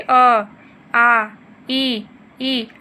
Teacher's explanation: जो होठों की स्थिति जो होती है ना उच्चारण करते समय, वो गोलाकार या वृत्तमुखी न होती है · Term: आवृत्तमुखी